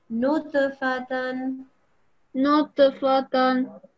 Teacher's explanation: So this is a ta with a sukoon, so it's a kalkala letter. We make a jumping sound, or jacking sound, like it's also called.